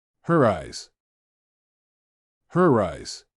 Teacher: the sound ‘r’ would be introduced in between two words that end and start with a vowel sound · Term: Intrusive R